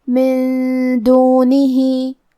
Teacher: کلمت من کے آخر میں نون ساکن ہے، پھر حرف الدال ہے کلمت دونہی. دال حروف الاخفاء میں سے ہے تو ہم یہ حکم کو غنہ کے ساتھ ادا کریں گے